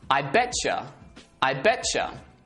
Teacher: they merge together and the sound becomes a CH sound